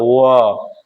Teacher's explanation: व इसमें क्या चीज? दांत और ओठ दोनों का प्रयोग होता है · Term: दंतोष्ठ